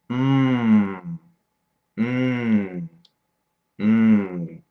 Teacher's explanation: They are called nasal because they are made in your nose. Notice how your nose vibrates a little as you make the sounds.